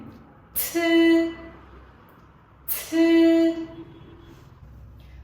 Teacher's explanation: khẩu hình miệng giống âm zi, tuy nhiên âm này là âm bật hơi cho nên các bạn sẽ bật hơi ra cùng cô nhé.